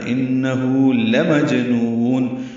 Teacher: جیم ساکن پہ قلقلہ ہے، نون کو لمبا کریں گے، وقفاً مد عارض للسکون ہے